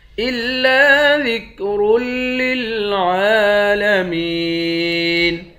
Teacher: إِلَّا ذِكْرٌ لِلْعَالَمِينَ، را کو موٹا پڑھیں گے، عین کے اوپر کھڑا زبر ہے، ایک الف کے مقدار کھینچ کر پڑھیں گے، میم کو یا کے ساتھ ملا کر یا کو ایک الف کے مقدار کھینچ کر پڑھیں گے، آخر میں نون ساکن ہے۔